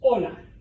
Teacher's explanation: You don't pronounce the H.